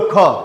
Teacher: બરાબર, બોલો ખ, તો જ્યારે કે હ બહાર નીકળતો હોય ને એવું લાગે તમને, એટલે કે ખની અંદર ક્યાંક અંશે હ ઉમેરાતો હોય ને એવું લાગે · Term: મહાપ્રાણ